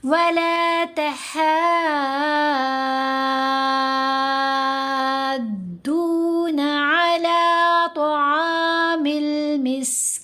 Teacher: مد لازم کو کتنا لمبا کریں گے؟ 6 حرکات، یعنی 3 الف کے برابر لمبا کیا گیا۔